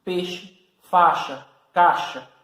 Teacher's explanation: Você observa que ao pronunciar essa palavra, eu tenho uma vogal E no meio dela e tenho um I. Só que esse I, muitas vezes, ele é falado de uma maneira tão breve, tão rápida, que a gente quase nem percebe. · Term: semivogal